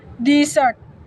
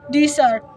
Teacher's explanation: in the word desert, noun meaning a dry region, the first syllable is stressed desert. In the word desert, verb meaning to abandon, the stress shifts to the second syllable desert.